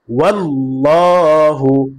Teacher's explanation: এখানে আল্লাহর সাথে লামের উপরে জবর আসছে। এ কারণে আল্লাহ শব্দ লামকে পুর করে পড়তে হবে। অর্থাৎ মোটা করে পড়তে হবে।